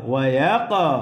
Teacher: কফ কলকলার হরফ, প্রতিধ্বনি আওয়াজ হবে, ধাক্কা দিয়ে পড়তে হবে